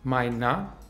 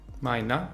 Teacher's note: Mit A-schwa am Ende